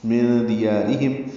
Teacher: یا کو 2 حرکات لمبا کرنا ہے، را باریک پڑھنی ہے، ہم میں میم ساکن پہ اظہار شفوی ہے